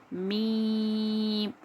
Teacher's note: ہم نے آگے پڑھا تھا کہ دونوں ہونٹوں کے گیلے حصے سے اندرونی پارٹس آف اندر سے جب ہم با نکال رہے تھے، لیکن اب دونوں ہونٹوں کے سامنے والا فرنٹ جو دکھتا ہے ہمیں اس سے ہم میم پڑھیں گے